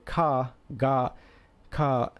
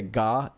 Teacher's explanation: if you say ka, there isn't a lot of vibration in your throat. Where if you say ga, like you can kind of feel it vibrate a little bit more. It's a little bit stronger. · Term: voiced and unvoiced